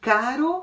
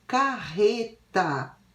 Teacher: as palavras que tem um R só o som é mais fraco e na palavra que tem dois é isso o som do